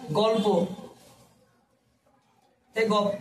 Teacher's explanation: ল আর প এর মধ্যে প, তাহলে ল চলে গেছে। তার মানে এখানে পরবর্তী গ্রাস করছে, পরবর্তী প, দেখো পরবর্তী গ্রাস করছে। · এখানে পরবর্তী দেখো প, প কি করছে, এই লটাকে গ্রাস করছে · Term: পরাগত